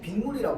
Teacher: 빗물이라고 하면서 소리를 닫아준단 말이야. 자, 그래서 우리 지금 여기 사이에 무슨 소리가 덧나? 니은 소리가